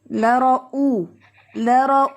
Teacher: او میں حمزہ کو آپ نے سیپریٹلی سختی سے پڑھنا ہے